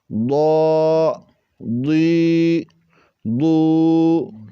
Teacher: ضاد کو ہم نے موٹا کر کے پڑھا ہے، یعنی زبان کا بغلی کنارہ اوپر مسوڑوں سے لگا تو پر کر کے اس کو ادا کریں گے۔